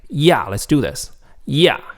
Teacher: Like when you say yeah, your tone naturally falls. Your tone naturally goes from a high pitch to a low pitch. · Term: falling tone